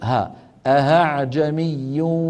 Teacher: أن يقلبها هاء بأن يوسع بين الوترين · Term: إبدالها هاء